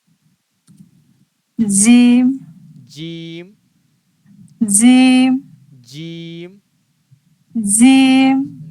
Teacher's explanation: اس بیچ کے حصے سے جسٹ اوپر جو تالو کا حصہ ہے، اس میں اس بیچ کے حصے کو سٹائیں تو جیم ادا ہو جائے گی